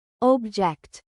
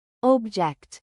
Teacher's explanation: As a noun, meaning a thing, we stress the first syllable, object. But as a verb, meaning to disagree, we stress the second syllable, object.